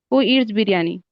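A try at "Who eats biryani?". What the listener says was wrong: ईट्स बोला है ना।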